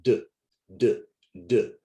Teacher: Rule number 2 for ED, for past tense, for regular verbs, is when the ED follows a voiced sound, then the ED sounds like d, d, d, because d is a voiced sound. So we have one voiced sound and then another voiced sound, d.